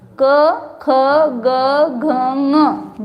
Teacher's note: जीभ कहीं पर भी लगती नहीं है, कंठ से निकलते हैं, इसलिए इनका नाम क्या दिया, कंठ्य व्यंजन, या इसको क वर्ग बोलते हैं।